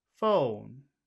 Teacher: we want to give it a high tone to make it sound friendly but we do have to make it go down because it's the end of the phrase so we'll we'll try to to go from high to low